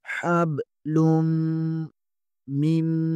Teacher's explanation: لام پیش کے آگے میم مشدد ہے یہاں پر غنہ ہوگا